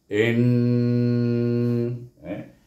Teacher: Apabila huruf nun bertasydid, maka hendaklah kita wajib digunnahkan, wajibul gunnah, iaitu dengan dua harakat, iaitu bunyinya in, iaitu lidah kita berbunyi pada daripada bawah pergi ke apa, makhraj nun, in, didengungkan sepanjang dua harakat, dan nun baris di atas nak.